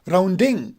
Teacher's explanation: Round will be stress and ding would be unstressed.